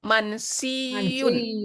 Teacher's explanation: Ya sukun dengan ya harokat bergabung atau melebur menjadi tasdid. Menjadi mansiyun.